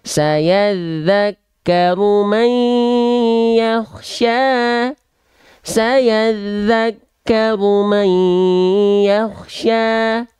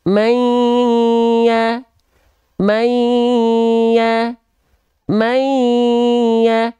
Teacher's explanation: nun sukunnya kita masukkan ke huruf ya dengan idgham, dimasukkan. Mai, setelah dimasukkan, didengungkan, suaranya harus masuk ke rongga hidung. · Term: idgham bigunnah